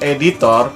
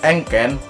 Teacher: vokal e-local depan tengah tak bundar